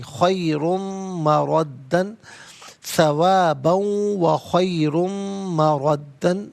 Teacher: خیرن میں را پر دو پیش کی ترمیم، اسے پر کر کے پڑھیں گے، مردہ کی میم کے ساتھ ملا کر میم کی آواز کو غننے کے ساتھ ادا کریں گے۔ ناظرین خیرن مردہ نہیں، خیرن مردن، ثوابا و خیر مردن، یہاں وقف کریں گے تو مردہ پڑھیں گے۔